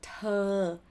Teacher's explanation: There's no R sound. Just open your mouth and your jaw a bit. The lips go forward.